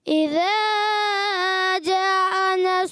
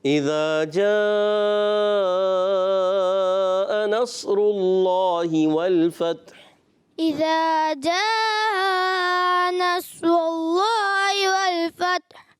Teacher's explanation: اچھا اذا کو آپ نے زیادہ کھینچ دیا اور جا پہ مد ہے. اذا کو تو ایک الف کھینچنا ہے اور جا پہ مد ہے, اس کو زیادہ کھینچنا ہے